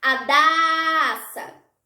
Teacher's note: A sílaba da foi pronunciada por mais tempo. Logo, essa é a sílaba tônica do meu nome.